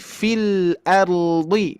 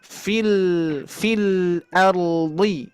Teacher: lam sukun ini mengalir ya, sedikit mengalir, sifatnya tawasut. Fil ardi, jadi sedikit mengalir ya.